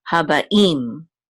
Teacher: It's a tipcha, and so we know that the accent of this word is on the last syllable